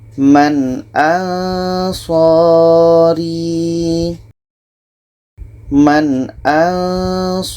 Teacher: Nun jelas, Hamzah jelas, dan tidak ada dengung. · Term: izhar halki